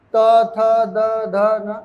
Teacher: जीभ टकरा रही है दांत से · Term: त वर्ग